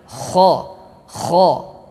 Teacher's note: Nah, kha ini adalah terletak pada ujung tenggorokan kita. Tenggorokan yang dekat dengan pangkal lidah. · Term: huruf kha